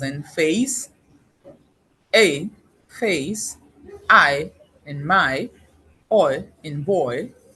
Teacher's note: in the course of producing the vowels the tongue moves from one position to another. So they are said to be complex vowels. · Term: gliding vowels